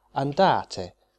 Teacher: put the stress on the penultimate syllable